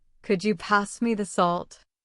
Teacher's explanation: listen to the way my voice rises on could you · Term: intonation